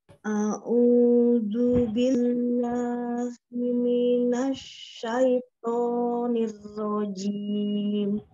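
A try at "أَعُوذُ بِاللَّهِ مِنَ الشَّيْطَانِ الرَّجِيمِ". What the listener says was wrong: Ya, zalnya ya. A'udhu tidak merubah zalnya menjadi huruf dhad. Tetap zal ya. Tidak jadi zu juga. Tidak jadi zu. Tidak a'udhu. Keluarkan ujung lidahnya sedikit.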